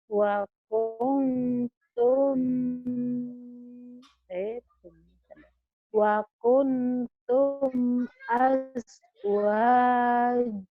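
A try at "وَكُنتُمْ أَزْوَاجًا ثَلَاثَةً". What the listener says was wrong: Ada tanwin Bu, itu ikhfa. Ikhfa tuh Bu ya. Wa kuntum azwaja salasah.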